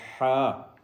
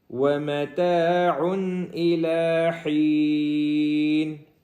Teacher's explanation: آخر میں جو حا ہے یہ سینے والا نہیں بلکہ حلق والا حا ہے، اس کو حلق سے نکالیں گے